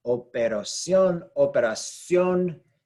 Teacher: you're going to have the inflection on the last syllable, which violates our rule because this ends with the letter N.